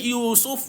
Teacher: Sebab kita waqaf, matikan fa. Maka bila kita matikan fa, mestilah keluar angin pada fa tu tuan-tuan.